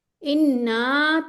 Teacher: नून मुशद्द का मतलब होता है दो नून। दो टाइम्स पहला नून साकिन दूसरा मुतहरिक। ठीक है? मुतहरिक और ये वाला ये वाला नून जो है यहां गुना जो हो रहा है वो इस नून पे हो रहा है।